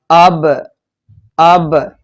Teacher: یہ ہونٹوں کا جو اندر کی طرف والا تر حصہ ہے وہاں سے ادا ہو رہا ہے